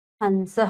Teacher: हन की आवाज आ रही है न का साउंड दे रही है